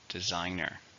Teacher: 3, stresses on the second.